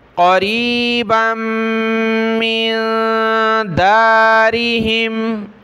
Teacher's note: औ तहुल्लु क़रीबम मिन दारिहिम, क़ाफ ज़बर क़ा, रा या ज़ेरी, क़रीब, बा को आगे मीम के साथ मिलाया, मीम को नून के साथ नाक में आवाज़ पैदा करेंगे